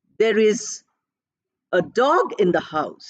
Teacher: usually the article does not get stress in a sentence the article is unstressed